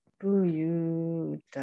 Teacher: ini kalau ada tanwin fathah ini dibacanya fathah panjang dua harokat